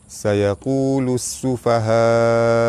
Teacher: Huruf mad bertemu dengan hamzah dalam satu patah perkataan, mad wajib mutasil, dibaca panjang 5 harakat